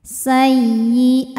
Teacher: mim sukun menghadapi huru selain dan ba di sini hurufnya wau maka mim sukun dibunyikan dengan jelas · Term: izhar syafawi